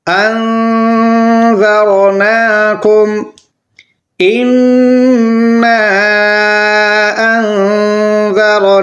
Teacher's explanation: خرا زبر کو کھینچنا ہے ایک الف کے برابر